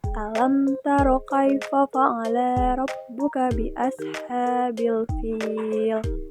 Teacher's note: Pada lafaz alam taro hukum tajwidnya itu mad tabii. Karena alif sukun setelah fatah pada lam taro dibaca panjang dua harakat.